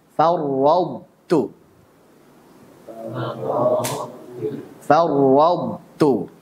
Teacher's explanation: Tebalkan dulu tanpa qalqalah, kemudian tipiskan huruf ta. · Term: idgham naqis